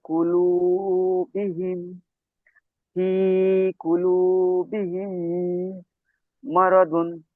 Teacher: মিমকে মিমের সাথে মিলিয়ে একালি পরিমাণ গুণা করে পড়তে হবে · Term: ঈদগামে সাফাবি